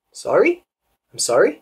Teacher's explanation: and notice the rising intonation right · If you do that, people are going to think something's wrong with you. So just give it a little bit of rising intonation.